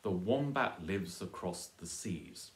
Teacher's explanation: And then again, the same rules apply here, that the article is going to be unstressed because it's just a little article, the, and seas is a noun, so it gets a stress.